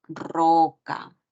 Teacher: esa letra puede hacer referencia a la vibrante múltiple, a la R, ¿no? Cuando está al inicio de una palabra